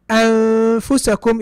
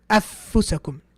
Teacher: However, you can feel there's a noon there. Okay, so anfusakum is different from afusakum. Afusakum would be idgham. Afusakum, there's no noon. But here when I say anfusakum, you're like, wait a minute, there's something hiding there.